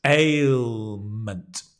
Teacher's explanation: Ail, it's a difficult word to say, I know. A, A, it's a sliding vowel. So you'll see my mouth changes.